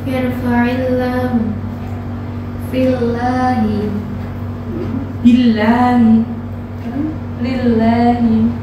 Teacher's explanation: lafaz Allah dibaca tipis karena diawali dengan huruf berharokat kasrah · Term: jalalah tarkik